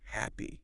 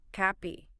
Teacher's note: Now that H sound at the beginning is important in English. It's a little puff of air out of your mouth.